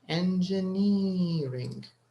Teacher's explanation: there's stress on the is it the third syllable n ring we have four syllables actually in this word so the stress is on the third syllable